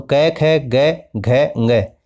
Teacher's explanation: तो घ का उच्चारण स्थान आपसे पूछा है तो कंठ हो जाएगा